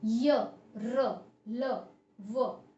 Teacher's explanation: इसमें हमारी जीवा मुख के किसी भी हिस्से को स्पर्श नहीं करती है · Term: अंतस्थ व्यंजन